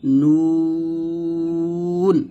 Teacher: নুন উচ্চারণ করতে হবে জিহ্বার আগা তার বর্গ উপর তালুর সঙ্গে লাগে, এখানে দাঁতের সঙ্গে লাগবে না